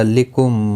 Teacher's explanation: ادغام شفوی ہوگا، گنہ کے ساتھ پڑھیں گے